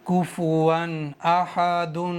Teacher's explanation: واو پر دو زبر ہیں اور دو زبر کے بعد میں حمزہ آ گیا ہے، اس لیے یہاں پر اظہار کا قاعدہ بنا ہوا ہے، تو ان دو زبر پر غنہ اور اخفا نہیں کریں گے، جلدی پڑھیں گے